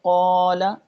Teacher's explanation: ہم اس کو ایک الف سے زیادہ لمبا نہیں کر رہے، ہم یہ نہیں کر رہے قولا، تو یہ کیا ہوئی چھوٹی مد قولا، جس کو ہم ایک الف پڑھتے ہیں، جس کو ہم حرف مدہ کہتے ہیں، الف مدہ، واو مدہ، یائے مدہ، یہ جو ہیں یہ چھوٹی مدیں ہیں، ٹھیک ہے۔